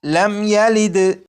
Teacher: میم ساکن ہے، میم ساکن کے بعد یہاں پر یا ہے، جب میم ساکن کے بعد یا ہے تو اس میم ساکن میں بھی غنہ نہیں کریں گے